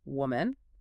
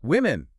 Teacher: It's all in that first vowel sound. It goes from a woo to a wee.